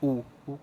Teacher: लिए हमारे मुंह का साउंड यानी कि होठों का साउंड गोल होठों का मतलब शेप गोल हो जाती है